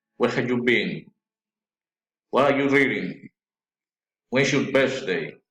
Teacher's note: Friendly interest, politeness, rising intonation.